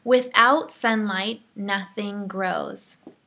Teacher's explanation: so it sounds like without alright so let's try it again remember the T sound is taken out